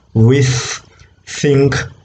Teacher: both rows of teeth are involved there right so it's a voiceless dental fricative · when the air escapes through that narrow gap it produces friction okay therefore it's a fricative so voiceless dental fricative